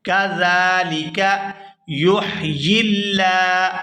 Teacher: لفظ اللہ کے لام کو باریک پڑھیں گے کیونکہ لفظ اللہ کے لام سے پہلے زیر ہے